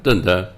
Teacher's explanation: ਇੱਕ ਧੱਦਾ ਧੱਦੇ ਦੀ ਆਵਾਜ਼ ਦੇਵੇਗਾ, ਦੂਜਾ ਧੱਦਾ ਦੱਦੇ ਦੀ ਆਵਾਜ਼ ਦਿੰਦਾ ਹੈ